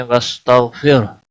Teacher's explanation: را ساکن سے پہلے زیر ہے، گویا کہ را ساکن باریک پڑا جائے گا